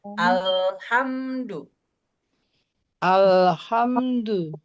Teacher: Perhatikan, pada kata al tidak boleh mantul. Jadi al ya al siap-siap ke ha.